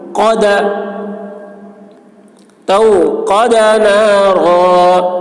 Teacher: قاف کی آواز موٹی